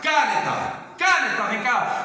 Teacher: Então, a sílaba tônica está no nê.